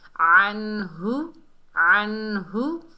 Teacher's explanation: नून को इजहार से पढ़ेंगे, यानी जाहिर करके पढ़ेंगे।